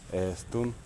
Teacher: То есть вместо пить у нас получается путун. Е мы заменяем на долгую э.